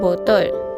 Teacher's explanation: Vokal yang ketiga ialah vokal belakang separuh sempit. Belakang lidah dinaikkan. Lelangit lembut dinaikkan. Keadaan bibir hampir bundar. Contoh perkataan ialah botol.